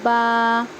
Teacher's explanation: آپ خود نکال کے دیکھ لیجئے، با۔ جب دونوں ہونٹ کے جو اندر کا گیلا حصہ رہتا ہے وہ دونوں جب ملیں گے تو یہاں سے نکلے گا با۔ اس کے بعد ہے تا۔